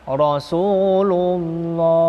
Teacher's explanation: Rasulullah, tebal. Apabila ada lam jalalah tadi sebelumnya berharokat doma atau setelah doma ya, ada dibaca tebal, tafkhim.